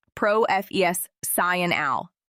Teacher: the word professional. The stress is on the second part.